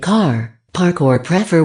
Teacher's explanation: the sound R is pronounced much more often than in British English